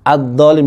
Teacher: Maka alif lamnya tidak dibaca adolin bukan aldolin atau walad walin bukan. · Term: alif lam syamsiyah